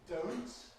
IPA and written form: dəʊnt (don't)